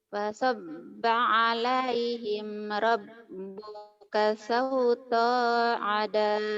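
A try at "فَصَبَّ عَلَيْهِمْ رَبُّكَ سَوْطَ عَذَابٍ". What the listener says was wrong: sauta adab pendek pasob pasob jangan pasab pasabba alaihim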